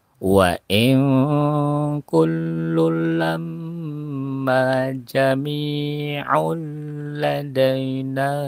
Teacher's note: tanwin bertemu dengan huruf lam jadi tanwinnya tidak terbaca ya langsung masuk ke dalam huruf lam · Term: ijgham bila guna